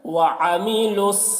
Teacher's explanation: عین کو حلق سے ادا کر رہے ہیں